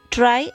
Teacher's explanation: Now the fifth type is post-alveolar, in which the tip of the tongue is the active articulator and the area just behind the teeth ridge is the passive articulator